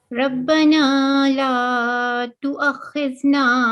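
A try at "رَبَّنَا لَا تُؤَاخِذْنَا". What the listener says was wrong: So you can see this alif. Okay. So you have to prolong it. For 2 seconds.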